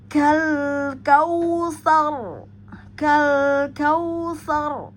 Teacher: Ya, maka terbaca tebal ya. Tafhim pada huruf ro. · maka ujung lidah kita nempel dengan langit-langit depan yang bergerigi, itu jangan dilepas, jadi ditahan agar terjadi tebal, getarannya tidak banyak ya. Saya ulang, kal kautsar ya, maka terbaca tebal ya, tafkhim pada huruf ro.